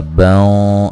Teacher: یہاں نون تنوین کا موٹا اخفا ہے